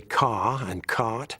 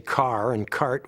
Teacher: So English people say ca and cot, where we say car and cart with an R in them.